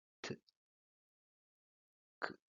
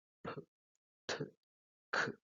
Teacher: en español esta plosión es muy leve, por lo tanto tenemos sonidos como t, k, mientras que en inglés tienen una plosión más aspirada y producen p, t, k.